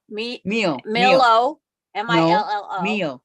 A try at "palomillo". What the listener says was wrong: The double L's are a Y in Spanish. No, it's a fact. The double L's are a Y in Spanish, so it would be palomillo, meal, not Millo.